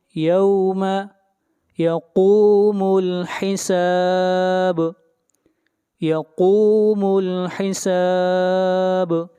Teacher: با کے اوپر قلقلہ کریں گے